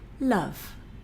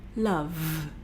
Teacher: So in reality, if I'm going to say a word that ends in a v sound, because it's at the end of the word, you're sort of running out of breath. And so the v sound sort of fades away more into a f sound, which, as you remember, is the partner of the v sound.